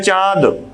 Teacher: तो ये जो चंद्र बिंदु का सिंबल होता है वो अनुनासिक चिन्ह होता है। और ऐसे वर्णों का उच्चारण करने में हवा मुख और नाक दोनों से बाहर निकलती है, इसे अनुनासिक कहते हैं। · जब हम इसका उच्चारण करेंगे तो उच्चारण नाक और मुख दोनों से ही उच्चारण करने में वायु बाहर निकलेगी